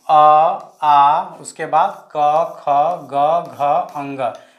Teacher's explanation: उच्चारण स्थान अगर पूछा जाए तो याद रखिएगा कंठ से और कंठ से इसका उच्चारण स्थान होता है इसलिए इसको बोला जाता है कंठ वर्ण